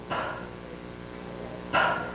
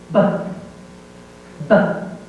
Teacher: This is the cognate with the sound b. They are both produced by the two lips closing together and then popping the sound. P has no tone, b has a tone.